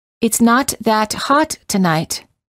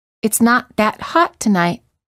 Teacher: Listen to the following sentences repeated twice, and notice how the first time the T's are released, and the second time the T's are held.